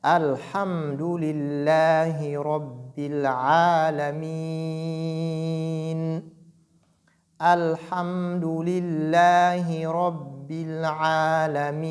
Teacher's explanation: Donc, à l'arrêt, on doit prononcer le Noun bit tawassut, donc de façon intermédiaire entre la shidda et la rakhawa.